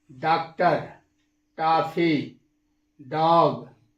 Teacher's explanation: यह अंग्रेजी भाषा की एक ध्वनि है जिसका उच्चारण आ और ओ के बीच किया जाता है